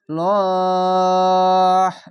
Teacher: এই শব্দ শেষ অক্ষরে একটি সাকিন দিতে হবে দিয়ে তিন আলিফ টেনে পড়বেন